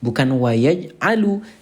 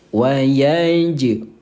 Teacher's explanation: Salah satunya yang kita bahas adalah huruf jim ya. Wajib dibacanya pantul saat sukun. Saat sukun itu artinya saat dia baris mati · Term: qalqalah